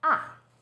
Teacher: Fourth tone, 四 声, starts high, then falls sharply